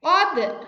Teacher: Kemudian selanjutnya ini adalah qalqalah. Qad harus ditekan, dipantulkan. Qad. Perhatikan.